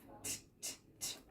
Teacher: have just sound our teeth are together and we're smiling T our tongue is up our voice is off